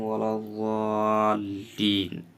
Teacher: الضالین میں یہاں بھی ضاد کے ساتھ الف بھی موٹا پڑھا جائے گا